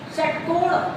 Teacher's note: षट्कोण बोलते हैं तो मूर्धा को टच करता है।